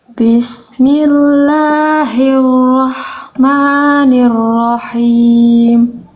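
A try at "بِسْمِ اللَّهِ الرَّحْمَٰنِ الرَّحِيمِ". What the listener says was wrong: Sekali lagi. Nah, itu hilang getarannya. Coba hirro.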